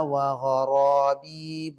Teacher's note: ரா ரெண்டுமே முஃபஹமா வல்லினமா உச்சரிக்க வேண்டும்